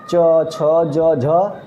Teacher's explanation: तालव्य व्यंजन क्या होता है, तालु से निकलता है।